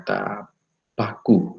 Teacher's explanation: misalnya ketika kita menyebutkan tetap paku ya Saudara akan besar rasakan udara terhambat sempurna kemudian terlepaskan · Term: hambat eksplosif